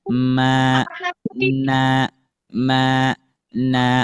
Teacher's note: makhraj yang keluar dari rongga hidung hurufnya nun dan mim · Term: alkhaisyum